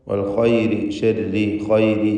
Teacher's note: ഈ പദങ്ങളിലൊക്കെ റാഇന് കസ്റാണ്. തർഖീഖ് നൽകി നേർപ്പിച്ച് റാഇനെ ഉച്ചരിക്കണം